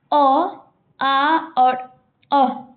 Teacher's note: अ, आ और अ का उच्चारण स्थान कहां है? कंठ। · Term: कंठ्य ध्वनि